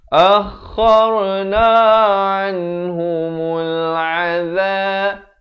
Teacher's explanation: Kha ni di hujung kerongkong.